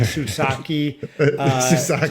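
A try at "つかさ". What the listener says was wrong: the T. You pronounce the T.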